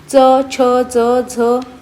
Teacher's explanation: तालूच्या पुढील भागाला कठोर तालू किंवा तालू असे म्हणतात इथे बघा जिभेचे पाते म्हणजे आपली जीभ आहे ते कठोर तालूला लावून ज्या वर्णाचे उच्चार होतात त्यांना तालव्य वर्ण असे म्हणतात